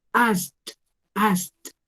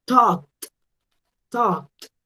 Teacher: Tenemos ask, que como termina en un sonido que no hace vibrar, a ver si alcanzan a ver por acá, si ustedes hacen ese sonido de el sonido de la K, no va a vibrar, no van a vibrar esas cuerdas vocales, entonces lo pronuncio con una T